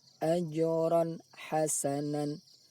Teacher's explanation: Bunyi tanwin dengan makhraj huruf ha seolah-olah ada pemisah. Hal ini hanya karena tujuan untuk memperjelas bunyi tanwin tersebut. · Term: izhar halki